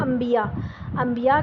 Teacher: ٹھیک ہے، اقلاب میں کیا ہوتا ہے کہ ہم نون ساکن کے فوراً بعد اگر با آ جائے تو ہم اس کو نون نہیں پڑھتے، پھر ہم اس کو میم پڑھ کے پڑھتے ہیں۔ جیسے آپ اردو میں ایک لفظ بولتے ہیں انبیاء، انبیاء کا لفظ آپ کے لیے کوئی نیا نہیں ہے، لیکن آپ دیکھیں کہ انبیاء کے لفظ میں میم نہیں ہوتا، پھر بھی آپ اس کو انبیاء بولتے ہیں۔